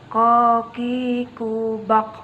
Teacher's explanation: Huruf ini keluar dengan menyentuhkan pangkal lisan kita dengan langit-langit bagian belakang. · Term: huruf ko